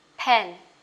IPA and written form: pen (pen)